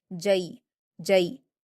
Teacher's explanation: جیم پر یا لین ہے تو اس کو ہم معروف آواز کے ساتھ جلدی پڑھیں گے